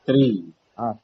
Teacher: जब कृपा का उच्चारण होगा तो ऋषि वाला री का उच्चारण होगा, और ऋषि वाले री का उच्चारण मूर्धा से होता है